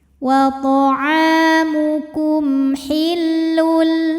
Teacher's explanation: Ada hukum idgham bila gunnah, karena ada tanwin dhammah menghadapi huruf lam, maka tanwinnya masuk ke lam, hillul, tanpa disertai dengung, jadi cukup ditekan. · karena ada mim sukun menghadapi huruf ha, maka mim sukun kita bunyikan dengan jelas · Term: idhar syafawi